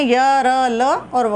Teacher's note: इन चारों का जब हम उच्चारण करते हैं तो कोई भी दो भाग पूरी तरह स्पर्श नहीं करते, इसलिए ये स्पर्श व्यंजनों में नहीं आते। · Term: अंतस्थ व्यंजन